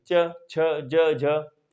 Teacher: जब तालु का बोलेंगे च छ ज, तो जो जीभ है आपकी, जीभ पीछे वाले हिस्से से टच होगी